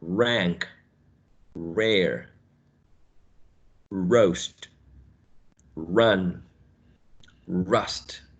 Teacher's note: the tip of the tongue or the tongue tip is curled back, right? Almost touching the area in between the alveolar ridge and the hard palate.